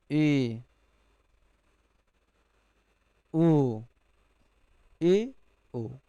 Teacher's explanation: जब हम उच्चारण करते हैं तो ओठ हमारे जो हैं वृत्त के आकार में आधे खुलते हैं। अर्ध संवृत्त जैसे ए ओ ए ओ।